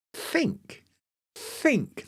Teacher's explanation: there's no vocal cords in think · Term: voiceless